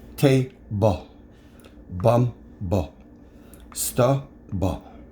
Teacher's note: the vowel sounds we hear in the final stable syllable is with a schwa sound. This is the sound that you hear between the B and the sound.